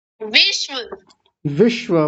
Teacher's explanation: ये बीच में जो आता है तालव्य शकार हलंत है आधा है